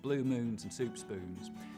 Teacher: I'll start off with very fronted Goose vowels